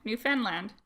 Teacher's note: It's called Newfoundland and Labrador, and they both get final stress.